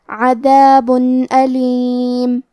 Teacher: الف حروف الاظہار میں سے ہے اور اظہار کا معنی ہے ظاہر کرنا، اور کیونکہ تنوین کی اصلیت نون ساکن ہے تو ہم یہاں تنوین ظاہر کریں گے اور اسے نون ساکن پڑھیں گے اور بغیر غنہ سے یہ حکم کو ادا کریں گے